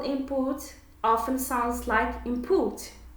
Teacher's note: The n becomes m before the bilabial p. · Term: assimilation